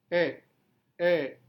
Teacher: Open mid berarti mulut terbuka tapi tidak terlalu lebar.